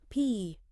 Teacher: maybe just a hint less breathy than a strong English P